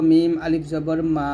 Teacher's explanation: মিমটা এখানে দুই ঠোঁটের শুকনো অংশে মিল করে উচ্চারণ করব